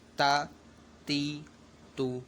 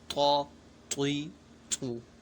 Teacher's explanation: فرق اس طریقے سے کیا جائے گا کہ تا جو ہے یہ باریک پڑھا جائے گا، جبکہ طا یہ حروف مستعلیہ میں سے ہے، تو ان کو ہمیں پوری یعنی موٹا پڑھنا ہے